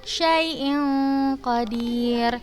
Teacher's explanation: Tanwin atau kasratain bertemu huruf qaf, hukumnya ikhfa. Berarti cara bacanya samar gitu.